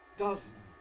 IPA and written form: ˈdʌzn̩ (dozen)